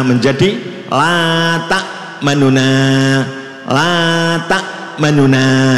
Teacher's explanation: Lah nunya itu dibaca ikhtilas, dicepatkan dan suara agak dikurangi.